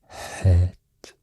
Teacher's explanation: some kind of H, the H, the pharyngeal H, pharyngeal fricative